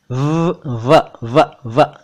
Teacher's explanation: जब हम व बोलते हैं तो दांत और होंठ मिलाते हैं। देखिए, निचला होंठ और ऊपरी दांत, 90।